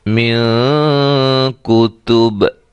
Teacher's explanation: با کو قلقلہ کرتے ہوئے وقف کریں گے